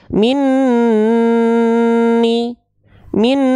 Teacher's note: yaanakum lanjut di sini mendapati ada Nun bertasydid ya warnanya pink Nun bertasydid hukumnya apa gunah ditahan sama ghunah dengungkan dua harakat